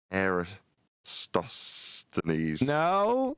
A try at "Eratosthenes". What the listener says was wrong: No S. Eratosthenes. There's no S in the beginning.